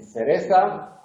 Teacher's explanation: la interdental sorda, en Cereza, al principio, la primera